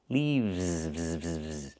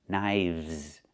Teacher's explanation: We use the letter V and pronounce it v plus the S making a Z sound like in zebra.